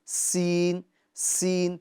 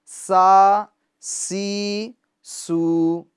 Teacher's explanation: اس حرف کو ہم سختی کے ساتھ ادا کریں گے، اور دوسری بات یہ ہے کہ اس کے اندر ہم سیٹی کی آواز پیدا کریں گے، کیونکہ اس کے اندر جو خوبی پائی جاتی ہے وہ سیٹی کی خوبی پائی جاتی ہے، سین سین، ٹھیک ہے، سا سی سو۔